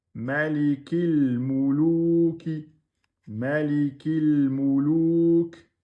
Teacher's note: Non, on doit dire le kef juste directement au lem.